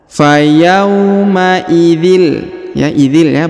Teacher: tanwin bertemu dengan lam bertasdid, maka tanwinnya menghilang, melebur masuk ke huruf lam yang bertasdid ya. Kemudian ditahan dan ditekan 2 harokat.